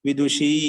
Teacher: షీ మీద దీర్ఘం అండి, ఉకారం ఉకారం హ్రస్వం